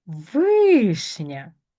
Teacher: Знову там, де і, у нас буде в пом'якшений.